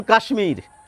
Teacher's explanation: কাশ্মীর শব্দের তালব্য স-এর সঙ্গে একটি মফলা যুক্ত থাকে, আমরা কিন্তু তালব্য স এবং ম দুটি বর্ণেরই উচ্চারণ করে থাকি